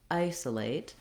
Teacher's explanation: In isolate, the main stress is on the I.